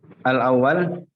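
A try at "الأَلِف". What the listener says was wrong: baca yang benar, teliti. Ini bukan awal. Al-alif terus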